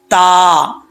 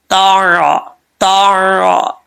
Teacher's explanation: زبان کی نوک اوپر والے دانتوں کی جڑوں سے لگے تو تا پڑھا جاتا ہے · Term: تا بریک